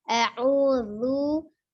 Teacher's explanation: U-nya menyongkan dulu ya, dhammah. Zu, zal, hurufnya zu, ujung lidahnya ada di ujung gigi seri bagian atas.